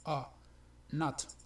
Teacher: es una O muy relajada, o sea, es entre O y A